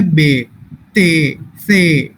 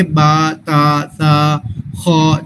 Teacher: جو ہم نے اے کی ساؤنڈس کے ساتھ پڑھی ہیں وہ ہم آ کی ساؤنڈس کے ساتھ پڑھیں گے